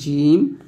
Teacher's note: এটা হচ্ছে জিম, জিব্বার মধ্যখান, তার বরাবর উপর তালুর সঙ্গে লাগবে